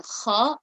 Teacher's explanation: The 7 heavy letters are the letter kha, and you notice that I kind of have a rounder mouth, and I am reading them with a raised tongue